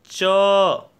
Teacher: आपकी जीभ मुख के ऊपरी और आगे वाले हिस्से को स्पर्श करती है, जिसे तालु कहते हैं, इसलिए च का उच्चारण स्थान तालु है।